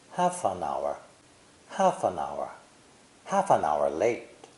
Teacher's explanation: The stressed words in this part are half and late. The words an hour are unstressed and lightly pronounced. 3 words are fluently linked together.